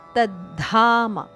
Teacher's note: ದ ದೀರ್ಘದ ಅಲ್ಪಪ್ರಾಣ ಅದಕ್ಕೆ ಮಹಾಪ್ರಾಣದ ಒತ್ತು